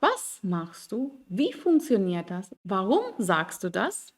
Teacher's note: Die Satzbetonung ist immer auf das W-Wort.